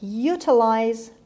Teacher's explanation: stress is on the first syllable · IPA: /ˈjuːtəlaɪz/